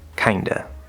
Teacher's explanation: the v sound in many cases is actually dropped